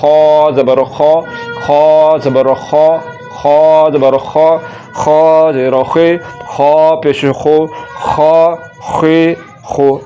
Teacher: زبان کی جڑ کو تالو کی طرف بلند کرتے ہوئے اس کو پر یعنی کہ موٹا کر کے پڑھیں گے